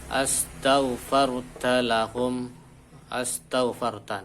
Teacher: hamzah wasol itu jatuh sesudah hamzah istifham, hamzah untuk pertanyaan, maka hamzah wasolnya itu dibuang